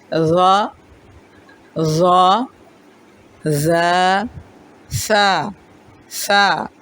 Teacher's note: زبان کی نوک اوپر اور نیچے کے دانتوں کے درمیان آئے گی اور پیچھے ہٹ جائے گی۔ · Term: حروف لثویہ